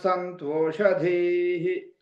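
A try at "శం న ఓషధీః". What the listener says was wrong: మళ్ళీ పోతు సంతో అంటున్నారు, సంతోషధీ అంటున్నారు మీరు. సంతోషధీః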